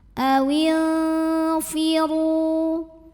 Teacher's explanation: Berikutnya ada ikhfa awsat karena nun sukun menghadapi fa, maka nun sukun dibunyikan samar-samar, siap-siap menuju fa disertai dengungan. Awil firu, huruf dha dibunyikan secara tafkhim karena berbaris dhammah, maka bacanya tebal. Ru mad tabi'i dhahiri karena waw sukun didahului baris dhammah, maka dipanjangkan ra-nya 2 harokat.